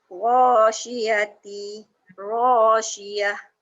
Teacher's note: Sebab kalau ta biasa dia bunyi ta, hanya ta marbutah saja yang berubah jadi ha. Tapi sama je, ta biasa pun hamas, ha pun hamas juga.